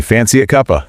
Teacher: maybe the rising intonation you hear in questions or informal statements